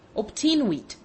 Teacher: logic demands that the second letter should be a B, while to the ear the sound is rather that of P